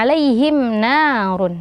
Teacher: Nah, mim sukun bertemu dengan nun ya, maka hukumnya juga adalah izhar syafawi ya. Jadi mimnya dibaca jelas, alaihim sempurnakan mimnya, baru kemudian masuk ke huruf nun dan tidak dipanjangkan.